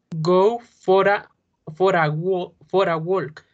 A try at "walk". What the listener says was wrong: Walk, no me pronuncies la L. Don't say walk. Walk. La L es muda acá, no suena. For a walk. Go for a walk.